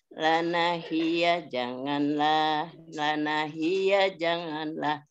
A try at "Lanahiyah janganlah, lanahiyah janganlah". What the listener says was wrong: Lanahiyahnya kurang tinggi.